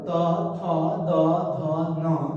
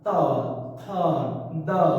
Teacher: तू से तवर्ग त थ द ध न, उसके बाद ल और दंत्य स का उच्चारण स्थान दांत है।